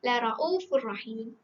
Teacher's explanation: Kita terus masukkan dalam ra. Jadi ianya adalah idgham bila gunnah, tanpa dengung. Jadi kita baca tanpa dengung lah.